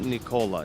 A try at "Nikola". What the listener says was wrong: It's Nikola. Nikola. You're just faster. Just Nikola.